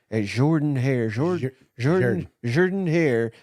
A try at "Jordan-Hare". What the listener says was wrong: It's just a U, just Jordan Hare. You're putting too many syllables in there.